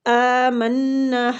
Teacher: حمزہ کے اوپر کھڑی زبر ہے تو اس کو بھی ہم نے 1 حرکات کھینچنا ہے